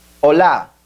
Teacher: the word Ola is stressed on the A and it has the acute Accent on it hola hello now